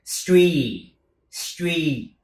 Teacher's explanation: Âm y dài, cho nên kéo ra cho tròn âm